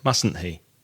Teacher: the first T seems to disappear in the pronunciation